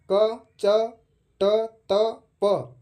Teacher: जिन व्यंजनों के उच्चारण में मुंह से कम हवा निकलती है वह वर्ण अल्पप्राण में गिने जाते हैं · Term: अल्पप्राण वर्ण